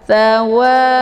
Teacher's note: dia hurufnya lembut dan desis anginnya itu agak samar-samar karena sifatnya adalah Hamas yuriiduawa jangan sa ya ataupun Sya tsawa